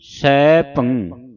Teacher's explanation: ਭਬੇ ਟਿੱਪੀ ਜਿਹੜੀ ਹੈ ਇਹ ਨੱਕ ਦੇ ਵਿੱਚ ਉਚਾਰਨ ਹੋਵੇਗੀ